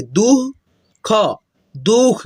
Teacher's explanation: द के बाद में हम लोग ह का साउंड निकालेंगे